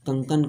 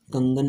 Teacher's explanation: जब अघोष ध्वनियाँ घोष ध्वनियों में परिवर्तित होता है तो घोषीकरण कहा जाता है